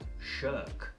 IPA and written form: ʃɜːk (Shirk)